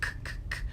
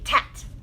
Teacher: if we say the sound K or C, which goes k, k, k, they might substitute a T for that instead